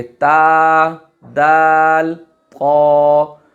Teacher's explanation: قا کے اندر تھوڑا سا یعنی اس کو موٹا کر کے، پر کر کے اس کو ادا کیا جاتا ہے